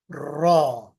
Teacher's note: र के लिए आपकी जो जबान की नोक है उसको थोड़ा उल्टा करके लगाना है ऊपर